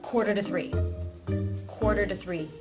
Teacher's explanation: The word to is actually getting a voiced sound under it. So it would then be the D sound. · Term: flap T or D